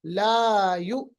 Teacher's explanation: इतना लंबा नहीं करना, सिर्फ एक अलिफ के बराबर सिंपल ला यु, क्योंकि हर्फ मद है और सबब मद नहीं है, हर्फ मद अलिफ है उसके बाद सबब मद नहीं है, तो ये मद असली है।